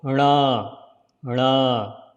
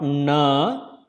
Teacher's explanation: Slide the tongue in hard palate when you produce the N sound.